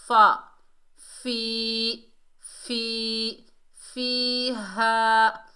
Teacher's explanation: ऊपर वाले दांतों के किनारे नीचे वाले होंठ के तरी वाले हिस्से में लगेंगे तो फ़ा अदा होगा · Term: फ़ा का मखरज